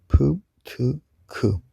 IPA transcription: pʰ, tʰ, kʰ